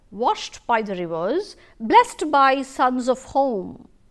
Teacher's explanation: it begins with a stressed syllable rather than an unstressed syllable. The poetry, a syllable pair that contains a stressed syllable followed by an unstressed syllable is called as trochee.